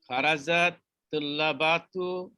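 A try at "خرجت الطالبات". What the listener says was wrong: তুল্লাবাতু না তলিবাতু? তো তুল্লাবাতু তো না, তলিবাতু।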